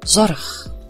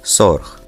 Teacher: Afrikaans merged the Dutch consonants Z and S to a single sound, spelt S.